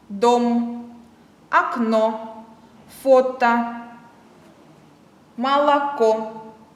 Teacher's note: Буква «о» дает звук «о» только под ударением. В безударном положении мы читаем букву «о» как «а».